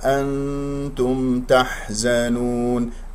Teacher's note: أنتم نون إخفاء مع التاء